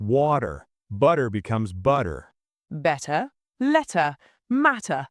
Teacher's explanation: Americans often turn the T into a soft D sound or what's called a flapped T